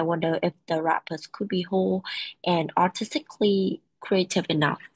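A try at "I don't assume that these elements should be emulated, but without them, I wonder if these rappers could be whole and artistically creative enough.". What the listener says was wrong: The rhythm was really weird at the end. I don't assume that these elements should be emulated, but without them, I wonder if these rappers could be, whole and artistically creative enough.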